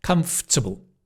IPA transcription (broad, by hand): 'kʌmf.tə.bəl'